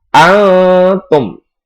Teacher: Karena ada nun mati atau tanwin bertemu dengan huruf ta. Dan cara membacanya yaitu samar-samar atau berbentuk huruf ta.